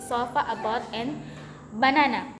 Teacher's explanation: It is a mid-central vowel and it is prevalent in unstressed syllables.